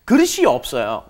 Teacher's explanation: S 받침 at the bottom of 그릇 needs to move up in front of E.